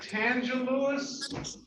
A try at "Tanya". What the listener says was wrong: It's Tanya. The J is silent. It's Tanya Latrice Lewis.